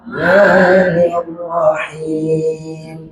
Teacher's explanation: Sifatnya itu huruf ro-nya itu tebal, tafkhim.